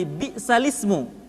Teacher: Kalimatnya asalnya bi'sal ismu, maka harokat hamzah dari kalimat al-ismu dipindahkan ke huruf lam sukun sebelumnya, sehingga kalimat asalnya bi'sal ismu dibaca menjadi bi'salismu. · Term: naql